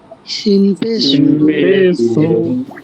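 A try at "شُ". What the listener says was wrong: কে শিনকে বলছেন সিন, সিন পে সব পে সু,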